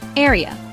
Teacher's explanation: It is a 2-syllable word. Stress is on the first syllable.